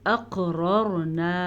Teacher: قاف پہ کلکلا ہو رہا ہے کیونکہ قاف پہ ساکن ہے ، قاف کو پر پڑھیں گے، دونوں را کو پر پڑھیں